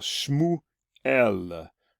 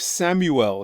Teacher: You'll see that the sh sound is turning to an s sound, as it often does from Hebrew to English.